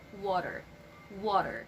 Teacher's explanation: it actually sounds like letter d not a strong t